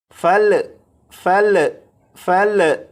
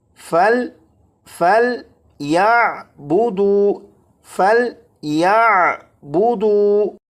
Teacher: یہ جو لام ہے اس لام پر قلقلہ نہیں کریں گے، یعنی اسے اس طرح سے نہیں پڑھیں گے فل فل فل، اس طرح نہیں، بلکہ فل فل یا بودو فل یا بودو فَلْيَعْبُدُوا فَلْيَعْبُدُوا۔